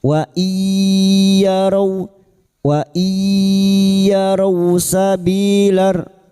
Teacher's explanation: Nun sukun lagi bertemu ya idgham bi gunnah, masuk dengan mendengung, masuk pada huruf ya dan mendengung selama 3 harakat